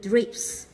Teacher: P là khi đọc vô thanh tức là âm nó sẽ không rung ở cổ của mình. P không rung ở cổ, và âm s cũng không rung ở cổ. Vô thanh nó sẽ đi với âm vô thanh.